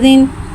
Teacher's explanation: ज़ाल नरमी वाला उर्फ़ लिहाजा इसमें सीटी नहीं आएगी, इसको बगैर सीटी के अदा करके पढ़ेंगे